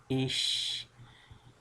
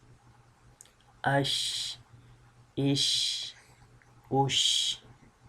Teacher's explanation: a very minor sound comes out when we pronounce sheen letter like Ash because it's a spreading sound in the mouth